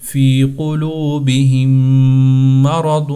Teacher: دو میم نہیں پڑھنے، یہاں پر ایک میم ہے کیونکہ یہاں پر ان کا آپس میں ادغام ہو چکا ہے